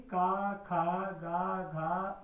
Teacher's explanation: इनका उच्चारण स्थान है कंठ और जीभ के नीचे का भाग। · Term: कंठ वर्ग